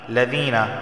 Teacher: لم یکن الذین، یا ساکن سے پہلے دیکھیں زیر آیا ہے، دال یا زیر زی، اسے ایک الف کے برابر کھینچ کر پڑھا جائے گا